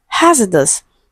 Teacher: Okay, so it is stressed on the first syllable.